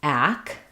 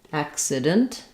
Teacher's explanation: the first C says the K sound, ack, and then the second C starts the second syllable and says the S sound. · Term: consonant cluster